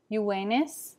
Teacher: v changes to the sound of a w